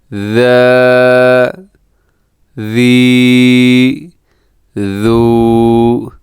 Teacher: یہ ہے ذال، اس کو نرمی سے پڑھا جاتا ہے، اس میں سیٹی نہیں ہے